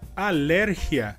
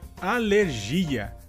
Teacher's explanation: A diferença entre essas duas palavras seria que, em espanhol, a sílaba tônica seria ler e, em português, a sílaba tônica seria gi